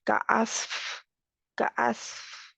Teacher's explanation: कास्फ, कास्फ, इस तरह फा का होगा तो आसानी से बाहर हवा निकल रही है क्योंकि खुला है, वोकल कॉर्ड खुला है। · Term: हम्स